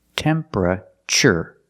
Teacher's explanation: The TU makes a ch sound like chicken.